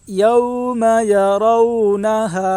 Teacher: واو ساکن سے پہلے زبر ہے اس لیے واو لین ہوگی واو لین کو نرم آواز کے ساتھ جلدی ادا کریں